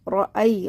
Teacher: را کو موٹا پڑھنا ہے، ای جلدی پڑھنا ہے